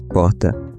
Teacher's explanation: Aqui o R é aspirado ou fraco em que a garganta praticamente não vibra. É um R suave em que o som quase desaparece, feito com a ponta da língua, que surgiu no Brasil em 1808, quando a família real portuguesa chegou ao Rio de Janeiro e a moda da época era imitar o R francês. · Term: variante glotal da vibrante, variante glotal